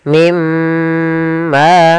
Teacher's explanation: Cara membacanya masukkan nunnya ke huruf mim dan kemudian ditahan dengan gunnah. Mimma. Kemudian pada lafal ma ada mad tabi'i. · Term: idgham bi gunnah